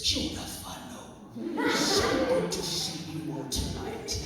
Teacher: the quality that he has is, it's back in the throat, quite throaty